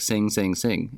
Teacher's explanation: In English, when we say sing, sing, sing, that G at the end is almost non-existent.